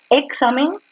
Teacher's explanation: La fuerza de voz está en la penúltima, por lo tanto es una grave.